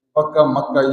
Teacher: با یہ چپوں سے نکلتی ہے، میم بھی چپوں سے نکلتی ہے، تو یہ دونوں قریب المخرج ہیں، تو عرب قریب المخرج کو ایک دوسرے کی جگہ پر استعمال کرتے ہیں۔ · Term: حرف شفوی